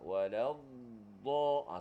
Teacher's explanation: tepi lidah kita yang menekan geraham sebelah atas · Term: huruf dad